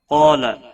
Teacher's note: قاف اور الف دونوں پور پڑے جائیں گے۔ قاف حروف مستعلیہ میں سے ہے، پور پڑا جائے گا۔